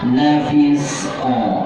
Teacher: Lafis pun, si-nya dialirkan, qa-nya qalqalah.